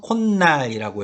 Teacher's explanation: 발음상 콧날이라고 해서 니은 소리가 덧나 있습니다